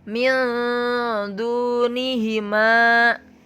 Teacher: Tidak min du, tetapi min, agak ditahan bacaannya 2 sampai 3 harokat